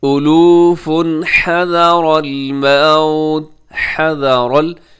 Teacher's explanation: اس میں را موٹا پڑھا جائے گا، را باریک نہیں ہوگا کیونکہ را کے اوپر حرکت ہے